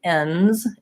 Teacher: make sure that you're putting your S and your Z on so that when you're trying to say ends, it doesn't sound like end. That it's clearly that I'm saying the plural versus the non-plural.